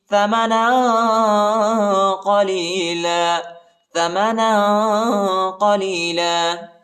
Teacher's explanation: ادھر اخفا بھی کریں گے اور قاف کو موٹا پڑھیں گے